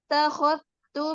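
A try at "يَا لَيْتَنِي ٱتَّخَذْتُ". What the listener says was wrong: dzal. Takhadtu. Ya, bukan khottu, bukan. Ya, dzal. Yaqulu ya laitani takhadtu.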